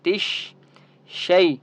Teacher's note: خطو و تش تا شین زیر تش، شین کو مضبوطی کے ساتھ پڑھنا ہے آپ نے. تش شی یا لین ہے، شین کو آپ نے لمبا نہیں کرنا